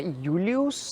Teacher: havia o som /j/, como na palavra Iūlius, essa semivogal [j]